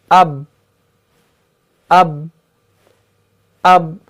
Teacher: तो हम यहां पर हरूफ कलकला में से हरफ बा को ले लेते हैं, क्योंकि बा जो है इसका मखरज आसान है, होंठों से अदा होने वाला हरफ है। तो जब भी हम हरफ बा को अदा करते हैं तो ऊपर का जो होंठ होता है वो निचले वाले होंठ से मिल जाता है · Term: तसादुम